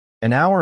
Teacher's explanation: hour starts with the consonant letter H, but the H is silent. So the word begins with the vowel sound.